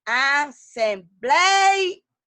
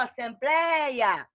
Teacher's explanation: O som é aberto, não fala assembleia. Assembleia, o ei não é fechado, é aberto. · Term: ditongo aberto